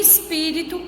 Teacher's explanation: em espírito, a sílaba tônica é o pi e ela é a antepenúltima, ou seja, antes da última sílaba.